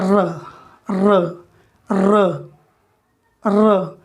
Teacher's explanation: वायु जो है वह कंपित हो रही है मसूड़े के पास। र र इसके बोलने में कंपन हो रहा है, इसलिए इसको एक अलग कैटेगरी में रखते हैं और कहते हैं प्रकंपित।